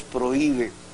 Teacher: es prohíbe inclusive rompiendo el diptongo que hay entre la vocal fuerte la o y la i porque la H Repito no tiene sonido alguno está ahí por